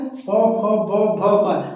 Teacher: तो हमारे होठ दोनों क्या है आपस में जुड़ रहे हैं इसलिए इसे क्या कहते हैं ओष व्यंजन यानी होठ वाले व्यंजन है ये ओट से बोले जाते हैं